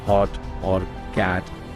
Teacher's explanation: the stop T at the end of words like hot or cat, where the air is cut off instead of released with a puff